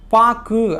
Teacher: கு அப்படிங்கிற எழுத்து சொல்லின் இறுதியில் வரும்பொழுது ஒரு மாத்திரைக்கு பதிலா அரை மாத்திரை அளவே ஒலிக்குது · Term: குற்றியல்